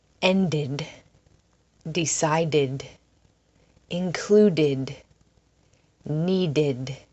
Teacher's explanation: The ending at the end of these words is id. And you'll notice id adds an extra syllable to the word.